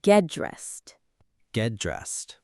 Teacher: A lot of learners pronounce it as two separate hard sounds, get and dressed, but native speakers often link them smoothly, get dressed. The T at the end of get softens when it's followed by another consonant sound.